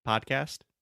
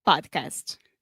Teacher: the first vowel sound is an open ah